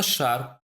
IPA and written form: ʃar (шар)